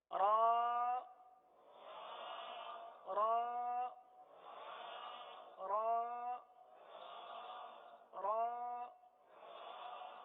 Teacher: را کا مخرج ہے زبان کا کنارہ اور دانتوں کی جڑ کے تالو کی جانب والے حصے سے ادا ہوتے ہیں. · اب اورا کے لیے زبان جو ہے یہ دانتوں کی تالو کی جانب والے حصے کی طرف مڑتی ہے اور سیدھی ہوتی ہے، اس طرف جاتی ہے اور سیدھی ہوتی ہے.